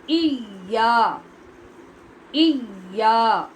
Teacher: اس کا اصل مخرج ہے زبان کا درمیان اور اس کے برابر اوپر تالو کا درمیان، جہاں سے شین نکلتی ہے وہاں سے یا نکلتی ہے۔